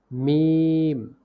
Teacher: দুই ঠোঁটের শুকনা জায়গা হইতে উচ্চারিত হয়